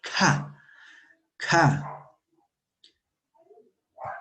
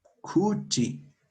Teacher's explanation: K, como soplando, sale aire de nuestra boca